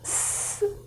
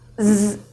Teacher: /s/, the sound comes from your mouth, /s/. Here, /z/, it comes from your throat